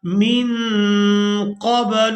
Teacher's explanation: نون ساکن پر اخفا کیا جائے گا، یعنی نون کی آواز کو ناک میں چھپا کر ادا کیا جائے گا